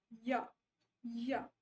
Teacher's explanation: glides मतलब जब आप की साउंड जो है थोड़ी सी ऐसे लगेगी that it is gliding, minimal obstruction glide into vowel, it will sound like a vowel